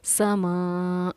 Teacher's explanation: حلق میں ہماری آواز نہیں گئی ہے، ہماری آواز بالکل حلق میں نہیں ہے، صرف حمزہ کی ادائیگی واضح ہوئی ہے